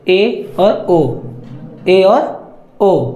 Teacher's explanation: इनके उच्चारण में मुंह को खोलने की बहुत अधिक आवश्यकता नहीं होती है, लगभग बंद रहता है। और अर्ध संवृत स्वर जो है जिसमें मुंह आधा बंद होता है